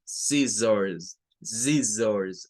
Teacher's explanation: Entonces, nótese cómo esta SC, pues va a sonar como una S simplemente. Y la doble S, en este caso, va a sonar como una Z, como una S vibrante. O sea, aquí se nos mezclan los dos sonidos que la S puede tener en el inglés. · O, R al final de las palabras suena con un schwa, se convierte en un schwa. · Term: S con vibración